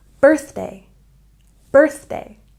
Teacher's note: And birthday has a stress on the first syllable.